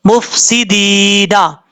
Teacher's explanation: اب یہاں پر فا ہے، فا پہ قلقلہ نہیں کرنا، مف نہیں پڑھنا، مف سیدین اس طریقے سے پڑھنا ہے. اور دال کے بعد یا مدہ ہے، ایک الف کی مقدار لمبا کر کے پڑھا جائے گا. جب وقف کریں گے تو نون کو عارضی طور پر ساکن کریں گے.